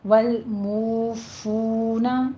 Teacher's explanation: آگے ہمارے پاس ہے والموفون، دونوں واو مدہ ہیں، ہونٹوں کو گول کیجیے۔ والموفون، فا پہ حمس کی آواز آنی چاہیے ساتھ میں